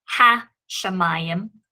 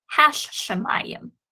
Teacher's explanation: that is a Forte inside of the Sheen there, doubling the pronunciation of the Sheen. So therefore, in this particular instance, I would not pronounce this word as ha-shemayim. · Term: doubling of the Sheen